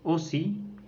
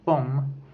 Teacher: Les deux sont des voyelles postérieures arrondies et orales, mais elles diffèrent en ce que O est mi-fermée et O est mi-ouverte.